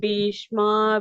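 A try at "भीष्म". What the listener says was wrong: B Mahaprana.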